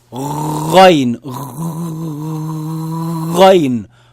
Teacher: The wet part of the upper throat. That's where you gargle from.